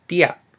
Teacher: we have t, the unaspirated t, and then you have the diphthong ia. Insert the t with the silent consonant, and you should get dia.